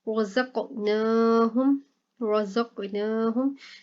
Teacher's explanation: रज़क़नाहुम, रज़क़नाहुम, यहाँ पर देखें कॉफ कलकला हो रहा है, ठीक है, और नून के ऊपर खड़ा ज़बर है, तो इस वजह से कॉफ पर कलकला करके पढ़ेंगे और नून के ऊपर खड़ा ज़बर है, इसको लंबा करेंगे